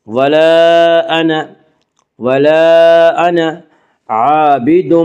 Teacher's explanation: ولا انا، ولا انا عابد، الف مدہ، الف ہمیشہ مدہ ہوتا ہے، الف سے پہلے ہمیشہ زبر ہوتا ہے، الف مدہ کو 1 الف کے برابر کھینچ کر پڑھیں گے